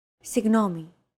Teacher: this character isn't pronounced using an english g sound at all it's like a very soft continuous and loosely held g almost as if you're gargling but don't make it sound too throaty